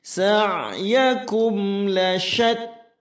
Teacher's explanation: ain sukun harus masuk dalam tengah tenggorokan.